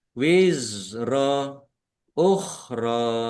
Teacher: za sukun bukan qalqalah. Jangan dipantulkan. Jangan dibaca wizro.